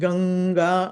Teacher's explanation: ఉంటే గనుక గం ప్లస్ గ అది సో గం ప్లస్ గ కాబట్టి ఆ గ మీద ఉన్నటువంటి అనుస్వారము ఆ తర్వాత గ వచ్చింది కాబట్టి గ అంటే కవర్గంలోని అక్షరం కాబట్టి కవర్గంలోని పంచమ అక్షరం రావాలి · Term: పరసవర్ణ సంధి